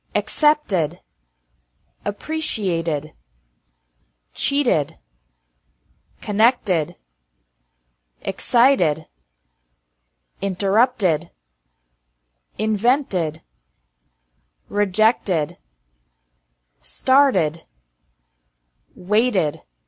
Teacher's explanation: the second pronunciation of Eed is like Eed D with an extra syllable after verbs ending with a t or d